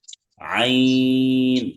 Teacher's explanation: একদম গলার ভেতর থেকে আসবে। হ্যাঁ, কণ্ঠনালীর মধ্যখান চেপে পড়তে হবে।